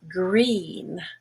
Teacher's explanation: green is very high and very much to the front, just behind the top front teeth